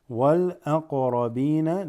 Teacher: the qaf there has what is called qalqala, just slightly doubles